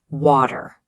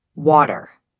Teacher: in Indian English, it stays a hard T, water. Can you hear that crisp T sound?